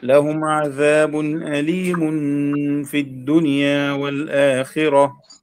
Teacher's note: أليم في غنة الإخفاء الحقيقي